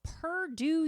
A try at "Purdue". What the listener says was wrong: It's Purdue. It's not Purr. It's P-U-R.